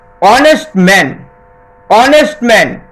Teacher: যেমন অনেস্ট ম্যান, অনেস্ট ম্যান, অনেস্ট ওয়ার্ডের first letter H, H উচ্চারণ হওয়ার মতো হওয়ার কথা, কিন্তু এখানে কিন্তু অর মতো হচ্ছে, অর্থাৎ ভাওয়েল সাউন্ড, তাই একজন সৎ ব্যক্তি বোঝাতে অ্যান অনেস্ট ম্যান হয়েছে।